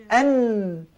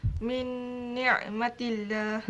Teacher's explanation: anak hujung lidah juga tetapi diangkat ke gusi betul. Gusi sebelah atas bukan gusi sebelah bawah. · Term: Nun